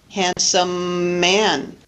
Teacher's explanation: we just lengthen the identical consonant when we pronounce it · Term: linking